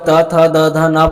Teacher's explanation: जब हम त थ द ध न पढ़ते हैं तो हमारा जीभ हमारे दांतों में टच होता है, इसी कारण से इसका उच्चारण स्थान दंत होता है।